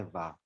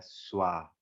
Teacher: Quando a gente tem esse encontro de S, V e A, fica mais o som puxado para o U, tá bem? Ao invés de ficar, como a gente fosse ler da nossa, que a gente conhece o som do V, seria vá, mas não é vá, é suá.